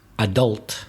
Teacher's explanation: And American, adult, stressing the second syllable